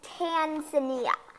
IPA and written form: ˌtænzəˈniːə (Tanzania)